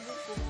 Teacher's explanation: bunyi U dengan ciri-ciri tinggi, belakang, bulat